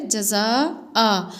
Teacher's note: अलिफ मद्दा है, इसको खींच कर पढ़ेंगे